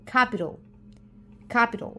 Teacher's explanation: no se pronuncia la t como tal sino que es más como una r suave y cambia la vocal de la A a la o capital